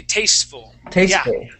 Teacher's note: we wouldn't we wouldn't say tasteful and pronounce that t really hard